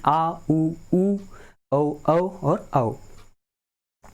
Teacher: उच्चारण में जिह्वा का पिछला भाग सक्रिय रहता है उन्हें क्या कहते हैं? पश्च स्वर कहते हैं